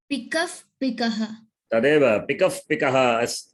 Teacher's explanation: वयं विसर्गस्य परम् इदानीं पवर्गः आगच्छति चेत् वयं इफ् इति वदामः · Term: उपध्मानीयम्